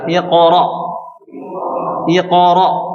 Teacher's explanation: Selalu dinaikkan suaranya, ditinggikan suaranya ke langit ya. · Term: huruf tebal